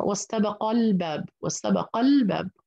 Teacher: هنا واستبق الباب، واستبق الباب، هنا سأحذف حرف المد الألف، أصلا همزة الوصل لا تلفظ عند المد، عند الوصل هي ليست همزة أصلية وليست حرف مد، هذه عند الوصل كأنها ليس لها وجود، فباللفظ بنط من القاف المفتوحة إلى اللام المظهرة، هنا لام مظهرة، لام ساكن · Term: يثبت وقفا ويحذف وصلا